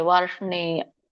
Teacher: ವ ಆದಮೇಲೆ ರ ಹೇಳಬೇಕು ವಾರ್ಷ್ನೇಯ ಇಲ್ಲಿ ದೊಡ್ಡ ಷ ಇರೋದ್ರಿಂದ ಷಟ್ಕೋನ ಶರೋದ್ರಿಂದ ಷ ಅನ್ನುವಂತದನ್ನ ನಾವು ಒಂದು ಸ್ವಲ್ಪ ಟಂಗ್ ರೋಲ್ ಮಾಡಬೇಕಾಗುತ್ತೆ ವಾರ್ಷಣೇಯ ಸೋ ಣ ಶಕೆ ಣ ಒತ್ತಿದೆ ಸೋ ದೀರ್ಘ ಇದೆ ವಾರ್ಷಣೇಯ ಆಮೇಲೆ